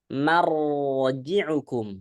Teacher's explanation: jadi baca ro tebal itu bibirnya nggak ikut ya